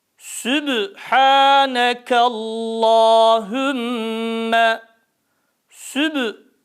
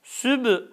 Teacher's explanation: sin harfi ötreli olduğu için dudaklar tam ileride